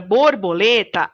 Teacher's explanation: a sílaba mais forte é a sílaba lê. Então, ela é a sílaba tônica da palavra borboleta.